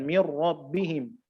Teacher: jangan kita menampakkan takrir, yaitu pantulan lidah yang berulang kali ketika menyebutkan atau membaca hukum idgham bi ghairi kunna ini.